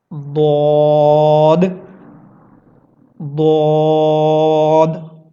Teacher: आपके ज़बान की जो राइट साइड है, आपकी ज़बान की जो दाईं तरफ है, आप उसको ऊपर की दाढ़ के साथ लगाएंगे